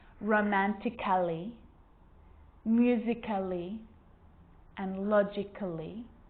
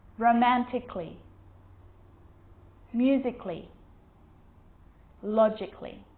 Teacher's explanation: cut the a out get rid of it